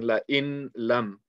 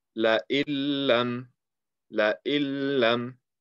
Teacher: And if you look at it, before I did all my markings, you see that normally it just looked like you're reading la in lam, but we're getting rid of the sound of the noon, and we're just gonna read la illam, la illam. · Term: idgham without ghunna